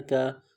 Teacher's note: کاف کو باریک پڑھیں گے.